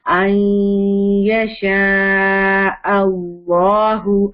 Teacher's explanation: merging with غنہ ہوگی اور ناقص ہوگی کیونکہ یا ہے, تو 50% نون اینڈ 50% یا کا ساؤنڈ آئے گا